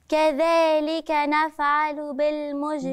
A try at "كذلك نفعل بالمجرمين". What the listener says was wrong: برضو بتقلقلي نفعلوا. بالمجرمين. عشان أقلقل إيه؟ هقلقله ساكن وعندي اهو في وسط الكلمة. بالمجرمين. لا، بالمجرمين.